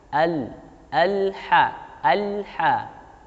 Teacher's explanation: ketika mengucapkan lam sukun tidak boleh ada pantulan sedikitpun